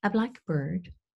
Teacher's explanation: With a blackbird, we have 2 stresses, and we have a different intonation pattern